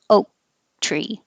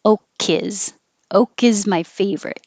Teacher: My tongue goes up to the K position, oak tree. And if the next word is a vowel, then you will release the K and hear it connect to the I.